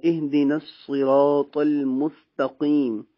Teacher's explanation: سین باریک پڑھا جائے گا، صاد پر یعنی موٹا پڑھا جائے گا۔